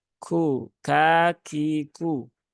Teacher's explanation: huruf kaf itu ada sifat hams yang harus ditunaikan ya.